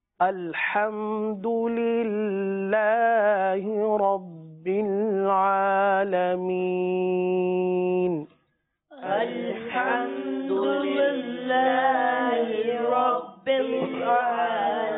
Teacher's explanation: الحمدللہ اللہ عز و جل کا لام باریک پڑھیں گے. رب العالمین میں را کو پر پڑھیں گے. عالمین کم سے کم 3 الف تک کھینچ کر پڑھیں گے.